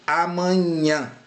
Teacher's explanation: Amanhã é considerado uma oxítona porque a sílaba tônica é a última sílaba, nhã